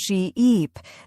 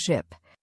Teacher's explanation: Say sheep and stretch the e sound sheep. Then say ship with a short sound ship. · The difference is in how long you hold the vowel sound. Right. A great way to practice this is by exaggerating the long vowel sounds.